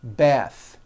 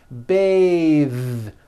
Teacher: Bath. But when you change it into a verb, to bathe, the vowel changes to an A sound and the TH is voiced.